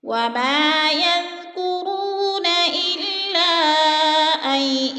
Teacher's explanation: حروف مدہ کے بعد حمزہ دوسرے کلمے میں ہے تو مد منفصل 4 الفی مد ہے. 4 الف کے برابر ہم نے اس کو کھینچ کر پڑھنا ہے